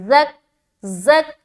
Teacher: یتلو علیکم آیات آگے وَيُزَكِّيكُمْ واو زبر وا یا پیش یو وایو زا کاف زبر زک زا کو سختی سے نکالیں گے اور سیٹی کی آواز بھی آئے گی